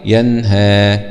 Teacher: لا نغن في النون، لا نقول ينهى أو نأتي بإخفاء ينهى، لا، وإنما هذا إظهار حلقي ينهى.